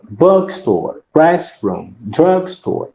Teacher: não é a palavra mais forte, não é, que você tem aqui, é a primeira, quando você tem um substantivo que é composto